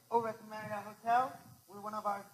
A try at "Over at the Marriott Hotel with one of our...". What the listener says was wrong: He's up. He sounds like he's a songbird almost, right? Okay? The problem is you need to start your tonality lower. You need to give yourself room to manage. Remember, you're managing tonality within a range. Learn your range.